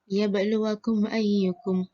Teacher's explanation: izhar syafawi kerana huruf min sukun bertemu dengan huruf hamzah. Cara membacanya dengan jelas.